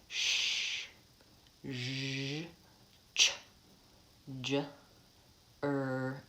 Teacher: palatal that means my palate the middle of my mouth